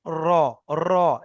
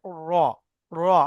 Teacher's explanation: সেজন্য বলা হয় র। জিহ্বার আগার উল্টা পিঠ, উল্টা পিঠ অর্থাৎ জিভটা উল্টে দিয়ে উপরের তালুতে লাগাবেন, তাহলে হয়ে যাবে র।